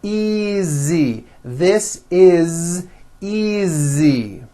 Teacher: again the S is like a voiced Z